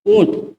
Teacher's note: छोटा ऊ, बड़ा ऊ का उच्चारण स्थान कहां से होता है, ओष्ठ से होता है